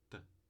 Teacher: O ponto de articulação, língua nos alvéolos ou atrás do dente, alveolar, e sem vozeamento. Então é a oclusiva alveolar surda ou oclusiva alveolar desvozeada.